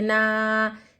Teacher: حرکت کیا ہے زبر ہے، پھر الف مد بھی ہو رہا، نا کو ہم ایک الف کی مقدار کھینچیں گے، لمبا کریں گے